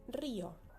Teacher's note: la vocal cerrada va a ser tónica, o sea que va a tener la fuerza de la pronunciación en esa vocal cerrada